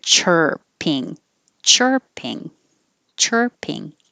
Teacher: The vowel is the R sound, really, just your tongue in the R position